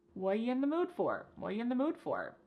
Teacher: The word are is gone, and the word you has been reduced to ya. So when we link together what and you, it's super fast.